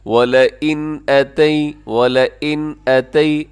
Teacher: وَلَئِن وَلَئِن، اور یہاں پر کیا ہے کہ نون ساکن ہے، وَلَئِن کے اندر نون ساکن ہے، اور نون ساکن کے بعد آگے اتیت کے شروع میں حمزہ ہے، تو یہاں پہ اظہار ہوگا، یعنی یہ اس نون ساکن پر آپ غنہ نہیں کریں گے، آواز کو ناک میں نہیں لے کے جائیں گے۔ وَلَئِن أَتَيْ وَلَئِن أَتَيْ، ایسے تیزی سے آپ پڑھیے گا۔